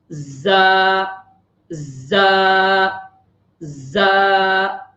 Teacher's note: زا میں سیٹی کی آواز نکلے گی.